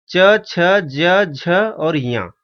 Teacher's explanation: ये च वर्ग में आते हैं। इनका उच्चारण स्थान तालु है।